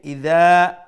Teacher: make sure you pronounce the ذال with a softer tone and one alif long due to the alif madda